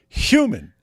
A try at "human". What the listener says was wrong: You can't say the hard H sound.